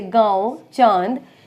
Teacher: अनुनासिक वे स्वर होते हैं जिनको हम मुख और नाक, देखिए नाक और मुख दोनों की सहायता से उच्चारण करते हैं। ये एक होता है चंद्र बिंदु, जैसे गांव, चांद, इसमें मुख और नाक दोनों का प्रयोग होता है।